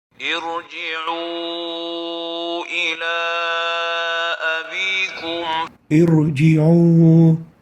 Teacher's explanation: So the Tafkheem here is because of a transient kasra caused by a transient hamza.